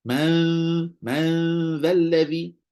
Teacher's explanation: bunyi zal ada lidah kat luar